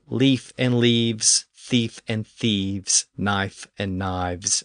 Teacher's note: So English did have a V sound, but it only occurred in certain limited situations where the F sound became voiced and switched to a V. This could happen in the middle of a word or at the end of a word, like a word ending in an F when it was made plural.